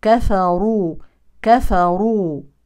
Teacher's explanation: كفروا نفخم هذه الراء لانها مضمومه وننتبه لترقيق الكاف والفاء لا تفخم مع الراء